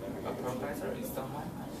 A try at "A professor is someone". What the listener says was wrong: Okay, is someone, a little more stress.